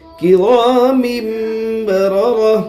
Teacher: گولتا پر وقف کرنا ہو تو گولتا ہائے ساکنہ بن جاتی ہے